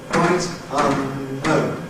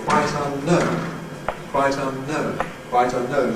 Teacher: What tends to happen when we've got three potential accents is that we suppress the middle one. So instead of saying quite unknown, we say quite unknown, quite unknown, quite unknown. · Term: stress shift